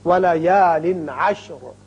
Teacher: وقت کی صورت میں را ساکن ہوگا اور پر بھی ہوگا، اس لیے کہ پہلے زبر ہے